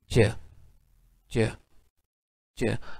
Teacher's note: अगर आप थोड़ा सा गौर करें ना, और अगर आप कहें च च च, आप देखेंगे कि आपकी टंग का जो ये वाला पार्ट है, ये वाला, ठीक है, जिसे हम ब्लेड कहते हैं, ये थोड़ा एल्वियोलर रिज पर टच करेगा, और जो आपकी टंग का जो है वो फ्रंट पार्ट है ये आपके हार्ड पैलेटल को टच करेगा। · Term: पैलेटो एल्वियोलर